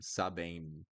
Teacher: You don't close your mouth to pronounce the M.